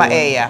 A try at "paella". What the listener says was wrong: You don't pronounce the L. It's, you say paella.